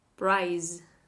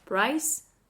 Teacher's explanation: Z is the voiced version of S.